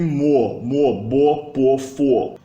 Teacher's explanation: As labiais fazem o o ficar labializado também, então a gente não tem mo, a gente tem mo, bo, po, fo.